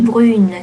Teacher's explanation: that e makes the n pronounced, which does not nasalize the u anymore. So it's going to be a clear u in that case, in the brun, brune case.